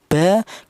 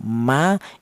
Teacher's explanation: Kita bilang ba, kita bilang ma, itu kedua bibir atas dan bawah itu rapat atau nempel dulu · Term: kedua bibir yang rapat